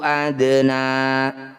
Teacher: bunyi dal pantulannya mengalir saja jangan berlebihan